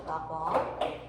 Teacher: 리을이 니은으로 바뀐다는 점에서 교체가 되는 거예요